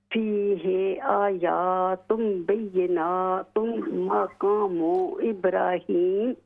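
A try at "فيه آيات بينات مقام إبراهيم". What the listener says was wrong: غنہ کریں نا، فیہ آیات بینات مقام ابراہیم،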